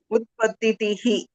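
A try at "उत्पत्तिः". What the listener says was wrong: But how is it utpatitihi? There is no two e's here, no? I've given that word to see if you remember how this itta is pronounced.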